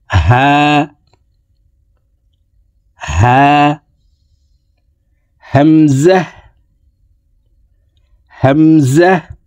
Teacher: হা হামজা এই দুইটি হরফকে হলকের শুরু থেকে পড়তে হবে। হা। হা।